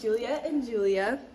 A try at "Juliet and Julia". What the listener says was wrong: that sounds like Julia and Julia.